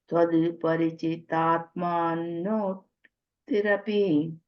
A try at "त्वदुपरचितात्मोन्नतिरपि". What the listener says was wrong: Parachita. I think you say it's pari again. Parachita. This word you cannot break it, so you can't do anything if it is you have to say it that way.